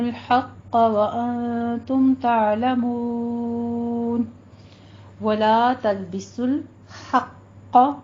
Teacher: حا باریک رکھیں گے، قوف کو پر کر دیں گے